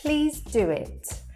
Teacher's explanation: So there, do and it are connected by the w sound. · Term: intruding w